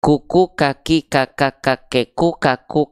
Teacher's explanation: tempat keluar dari huruf kaf itu disebut dengan aqsal lisan. Aqsal lisan itu artinya pangkal lidah kita atau lidah paling dalam kita.